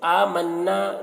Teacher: लू में जो मद है, इस मद को मद्द मुनफसिल कहते हैं। आमन्ना नून मुशद्दद है, गुन्ना होगा और अलिफ मद्दा है, खींच कर पढ़ेंगे।